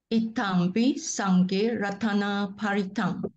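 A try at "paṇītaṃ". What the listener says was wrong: Not paritam, no R. N. Panitam. Panitam.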